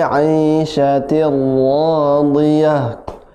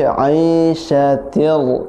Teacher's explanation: tir ra masuk ke ra